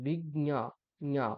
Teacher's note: যেহেতু এখানে জকার তারপর ঞকারটা আছে, জকারটা স্পষ্ট না শোনা গেলেও ঞকারটা স্পষ্ট শোনা যাবে।